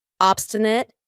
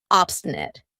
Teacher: notice how I pronounce it with a schwa at the end